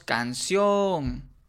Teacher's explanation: Si nosotros decimos canción, nos damos cuenta que la vocal o es la que tiene más fuerza o más peso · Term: sílaba tónica